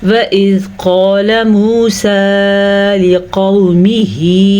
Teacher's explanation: वइज़ नरमी के साथ ज़ाल को पढ़ेंगे और क़ाफ ये मोटा है तो मोटा क़ाफ पढ़ेंगे और पुर भी करेंगे